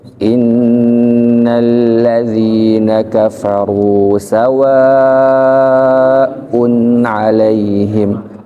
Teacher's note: Kafaru rendah. Sawaun alaihim ini adalah penegasan. Kalau penegasan berarti dibaca dibaca tinggi